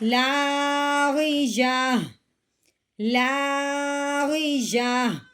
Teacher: وقف کی صورت میں یہ تا ہوتی ہے اس کو ہٹا دیتے ہیں، پیچھے صرف ہاں کی آواز نکالتے ہیں